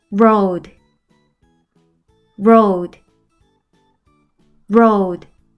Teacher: 뒤에 오는 A는 소리가 나지 않고 앞에 오는 O만 장모음 소리가 나서 오우 소리가 나요. D는 어떤 소리가 나는지 기억나나요?